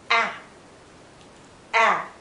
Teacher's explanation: this is a tense sound it's short our lips are still spread